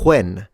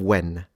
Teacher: This is still a characteristic of some American accents to aspirate to the W.